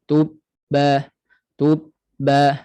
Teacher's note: Satu ba mati, satu ba yang berbaris atas. Pada ba mati inilah kita sekat suara sekejap.